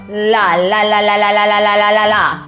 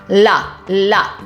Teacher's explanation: distinct so when we make the L Sound it's pretty easy I like to just take my tongue to the top of my mouth behind my teeth curl it up and you just let it go